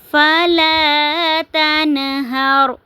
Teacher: نون ساکن کے بعد حروف حلقی میں سے ہا آ رہا ہے تو اس کو ہم نے ظاہر کر کے پڑھنا ہے، جو ہے آواز کو ناک میں نہیں چھپانا